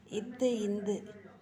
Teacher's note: மேல்வாய் பல்லின் அடியை நாக்கின் நுனி பொருந்துவதால் பிறக்கும் எழுத்து இத்து, இந்து.